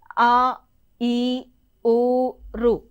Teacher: ఆ తర్వాత దీర్ఘములు 2 మాత్రల కాలంలో పలుకబడతాయి.